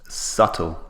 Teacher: the B is what we call a silent letter so we don't pronounce the B in this word strange but English is very often strange so subtle notice the